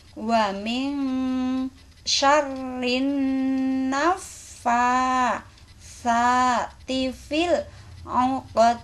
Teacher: Di sini ingat samar-samar karena ada nun mati ketemu shin.